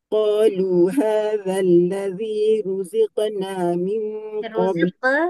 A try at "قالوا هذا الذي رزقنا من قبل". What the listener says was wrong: Ruziq tak? Hadzal ladzi ruziqna min qalqalah dia masih lagi ke makhraj qaf yang tebal. Ruziqna min qabl.